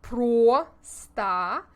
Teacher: we need to make our mouths into an o shape but when it is not the emphasized syllable as in pro star we relax our lips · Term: reducing the vowel